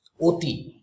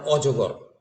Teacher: অয়ের উচ্চারণ ওখানে হয়ে গেল ও, আর অজগরের উচ্চারণ কিন্তু অই থেকে গেল